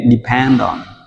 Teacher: Depend và on chúng ta nối liền nên depend on.